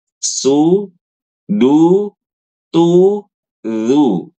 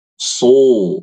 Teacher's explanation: Kalau huruf sod, dhammah, so, tebal